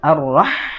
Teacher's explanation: ha itu makhrajnya, ya, dia timbul dari wasatul halqi, ya, tenggorokan bagian tengah.